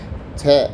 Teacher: छ अघोष है महाप्राण है निरनुनासिक है और स्पर्श संघर्षी है